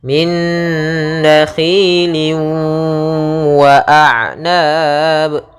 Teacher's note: cara membacanya yaitu tanwinnya masuk kepada huruf wau kemudian ditahan gunahnya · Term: idgham bhunah, idgham bi gunnah